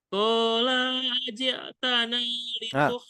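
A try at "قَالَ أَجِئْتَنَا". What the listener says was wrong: La-nya kepanjangan. La-nya kepanjangan. Qala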